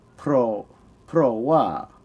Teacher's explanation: you could say pro wa, high then falling tone